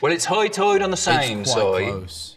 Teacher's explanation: Islanders are sometimes called high tiders because of that particularly distinctive eye sound